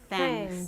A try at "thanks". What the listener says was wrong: Yeah, be careful with this pronunciation. It's thanks. TH sound, your tongue all the way out as you are bringing the air out of your mouth. And then you do like, thanks.